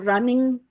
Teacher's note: One of the variables Trudgell studied was the final consonant in words like walking, running, where this ing sound was there. In standard British English, the sound spelled ng is a velar nasal.